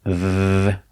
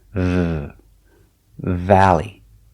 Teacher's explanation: When you make the sound v, you want vibration with your lip and your top teeth. V. Make the sound position straight.